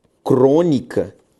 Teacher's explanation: São palavras proparoxítonas da língua portuguesa, cuja sílaba tônica é a antepenúltima.